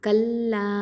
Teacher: கல்லா அலிஃப் மத்து இருக்கிறதுனால 2 ஹரக்கத்தை நீட்டி ஓதுவோம்